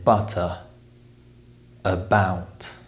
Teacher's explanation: This is the most common sound in the English language, and it only appears in the unstressed syllables of words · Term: schwa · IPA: /ə/